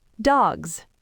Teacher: Your throat doesn't want to turn off that quickly. So, the S automatically turns into a voiced Z sound. Dogs. And cuz that final G and Z are voiced, the vowel in the middle of the word has to stretch.